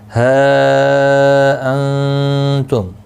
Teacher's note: ہا مد منفصل ہے، 3 الف کی مقدار کے برابر کھینچ کر پڑھیں گے. نون ساکن کے بعد حروف اخفا کا تا آیا ہے، اخفا حقیقی ہوگا.